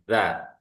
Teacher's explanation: Bunyinya keluar dari ujung lidah ya, ujung lidah kita ini, serta menepati ujung 2 gigi seri yang bawah, ujung gigi seri yang bawah. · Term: huruf zal